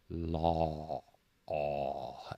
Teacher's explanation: The aw sound, like in law, tends to be the difficult one for students. And this comes from deep in the throat, and it's kind of a growly sound. And when we're producing this sound, I kind of draw the corners of my mouth back a little bit to make this sound. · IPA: /ɔ/